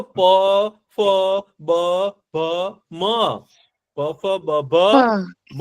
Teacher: બોલતા આવડે છે કોઈને પણ હોઠ નો અડવા જોઈએ હો ભાઈ પ કોઈ દિવસ હોઠને અડ્યા વિના સરખો બોલી શકાય નહીં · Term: ઓષ્ટ્ય વ્યંજન